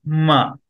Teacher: only lips and nasal activity